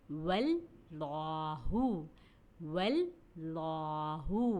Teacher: واو کے اوپر زبر تھا، اس لیے ہم نے اللہ کے لام کو موٹا ادا کیا